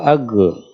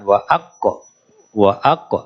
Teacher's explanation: Jadi terhenti dulu baru dipantulkan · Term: qalqalah